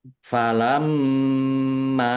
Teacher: mim tasdid dibaca ghunah atau mendengung ditahan biar tampak mendengung Mim fathah alif mad thobi'i.